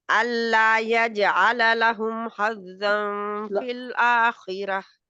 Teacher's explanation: یا کو نرم پڑھنا ہے، اس کے لیے زبان جو ہے اوپر تو اٹھتی ہے لیکن تالو سے لگتی نہیں ہے، جیم کے لیے لگتی ہے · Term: نرم یا